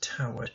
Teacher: It substitutes an iamb with a troche, towered, emphasizing this first syllable and the second one unstressed